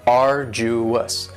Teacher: arduous has three syllables and the stresses on the first syllable